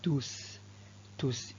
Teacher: le s final s'entend à l'oral